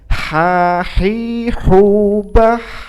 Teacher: bah itu juga harus mengalir, ada nafas yang mengalir, tidak tertahan